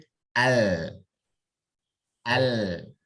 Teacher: Pakai ujung tepi lidah. Jangan diucapkan pakai ujung lidah. Tebal jadinya.